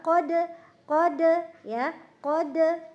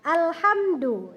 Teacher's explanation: Huruf dal ketika dia dalam keadaan sukun, maka dia menjadi qalqalah. Qalqalahnya muncul ya.